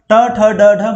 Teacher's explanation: ट ठ ड ढ मूर्धा से निकला।